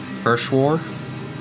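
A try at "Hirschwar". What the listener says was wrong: Urshwar? The first H is going to be silent. Urshwar? Ilse Urshwar.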